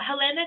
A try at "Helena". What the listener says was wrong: The name is pronounced Elna. Yes, H is silent.